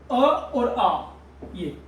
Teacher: ये अ और आ कंठ से बोले जाते हैं